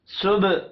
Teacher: سب با ساکن ہے، قلقلہ کریں گے